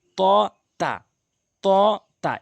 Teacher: এই দুটি হরফ একই জায়গা থেকে উচ্চারণ হয়, জিহ্বার আগা এবং সামনের দুটি দাঁতের গোড়া।